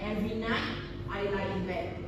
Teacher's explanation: the T in night may be dropped when spoken or sung quickly, making it sound like night I lie in bed. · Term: elision